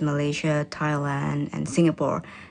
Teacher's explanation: the countries are listed using a level tone that then falls for the last item in the list